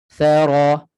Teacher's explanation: Jangan thara, nipis. Keluarkan sedikit hujung lidah daripada sempadan gigi. Hujung lidah sentuh hujung gigi kacip atas. Thara. Ra tebal.